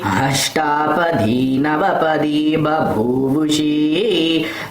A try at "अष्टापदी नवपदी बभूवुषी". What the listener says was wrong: It's all long, you're making it short. अष्टापदी नवपदी बभूवुषी